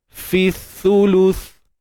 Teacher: Sebab sa ni kena keluar ujung lidah.